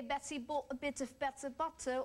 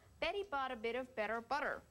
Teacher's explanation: the Americans flap the t sound? It sounds like an almost d sound.